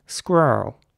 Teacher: the r's are very rounded in American English